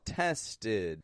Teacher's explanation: handed tested notice when I'm saying those as well tested I'm using a stop D at the ending